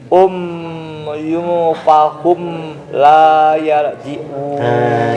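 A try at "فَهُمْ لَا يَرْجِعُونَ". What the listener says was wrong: Jadi si mimnya harus kan ngalir ya. Oke, ini pastikan bibirnya gini. Nutup ada gunahnya ngalir. Oke, jadi pertama tadi terlalu cepat.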